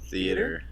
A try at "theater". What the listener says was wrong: You say theater. You like pronounce the A slightly with like an accent. It's usually just theater. like theater, but you're saying like theater.